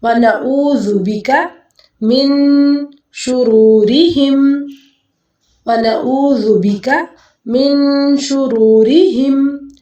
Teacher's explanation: اس نون ساکن کے بعد شین آ رہا ہے، اخفا کریں گے